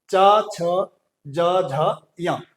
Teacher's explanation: और हमारा जो चवर्ग है, च, छ, ज, झ, य, ये हमारा जो है तालु से बोला जाता है, तालव्य से बोला जाता है।